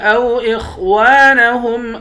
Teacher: نون کے بعد الف ہے، اس الف کے اوپر مد ہے، اس مد کو 5 الف کے برابر کھینچیں گے۔ خا کو موٹا پڑھیں گے، واو کے بعد الف ہے، الف حروف مد ہے، ایک الف کے برابر کھینچتے ہیں۔